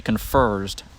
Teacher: People in Memphis, African-American people in Memphis, will add an R into that vowel.